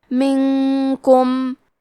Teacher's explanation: کلمت منکم میں نون ساکن ہے پھر حرف الکاف ہے. کاف حروف الاخفاء میں سے ہے تو ہم یہ حکم کو غنہ کے ساتھ ادا کریں گے